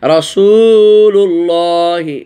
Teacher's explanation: তো রাসূলুল্লাহি এখানে মদে তবে এখানে একটা, আর আল্লাহ শব্দ লাফজে জালালার মধ্যে এখানে মদে তবে একটা, এক আলিফ টানেছি। রাসূলুল্লাহি এই যে ওয়াও সাকিন ডানে পেশ, সেজন্য এখানে একটা এক আলিফ টান দিয়েছি। লুল্লাহি এই যে মদ এই যে খাড়া জবর, এই জন্য আল্লাহ শব্দটি টান দিয়েছি। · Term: মদে তবাই